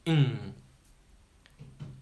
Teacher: the air comes through your nose your tongue is further back in your mouth